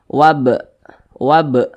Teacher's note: huruf ba Ini dia sukun maka cara bacanya dipantulkan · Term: qalqalah sughra